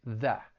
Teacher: they may drop that t and it's just going to sound like that and your tongue is going to be at the bottom of your mouth people may say it with a stop t that in which